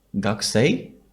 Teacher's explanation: with a bit of a rising intonation at the end of our voice. And we're kind of asking, are you a student?